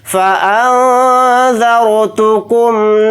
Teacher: ذال حروف اخفا میں سے ایک حرف ہے، تو نون کی آواز کو ناک میں چھپا کر اخفا کے ساتھ پڑھیں گے